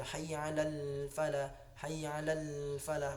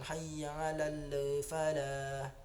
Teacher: Lam mati di situ bukan huruf qalqalah, la bukan huruf qalqalah, maka jangan dipantulkan. Jadi ngalir saja, hayya 'alal falah, hayya 'alal falah, bukan hayya 'alal falah.